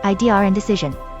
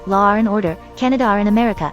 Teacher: In practically all dialects of British English, the word idea would generally be followed by an R sound when followed by another word beginning with a vowel. So for example, in saying, "It was his idea and decision," this would usually be pronounced Idear and decision.